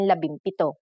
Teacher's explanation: If a P follows the NG connector, the NG becomes an M, just like in labimpito.